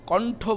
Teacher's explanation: যখন ট যোগ করি কিংবা ঠ যোগ করে কণ্ঠ বলি তখন জীব কিছুটা পেছনে যায়